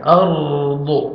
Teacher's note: را ساکن سے پہلے زبر آ رہا ہے، را کو آپ نے پر کرنا ہے